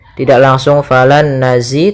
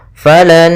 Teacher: cara membacanya nun yang pertama masuk kedua sambil ditahan gunnahnya. Maka falan, tidak langsung falan nazi tapi tahan dulu. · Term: idgham yang disertai dengan gunnah